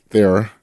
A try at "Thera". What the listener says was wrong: I think you pronounced that H. It said a silent H.